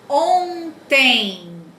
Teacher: Esse on aqui vai ser um dígrafo vocálico, lembra? E esse E com M no final da palavra, esse M, nesse caso aqui, tem o som do I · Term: ditongo nasal